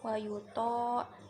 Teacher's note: Oke, kemudian tajwidnya yang pertama wayuto, tonya itu mad obi'i karena to kan berharokat fathah bertemu dengan alif, jadi dibaca panjang 2 harokat